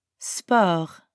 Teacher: The French word sport sounds super similar to the English word sport, but we don't pronounce the T at the end. And we use that French R sound again.